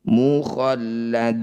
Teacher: Mukhalladuna, ketika mad tabi'i bertemu huruf hidup dan dibaca berhenti, jadilah bacaan mad arid disukun. Cara bacanya panjangkan 6 harokat, huruf terakhir sukunkan.